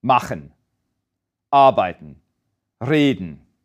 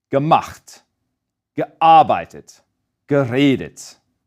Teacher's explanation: the main stress stays on that first syllable of that root verb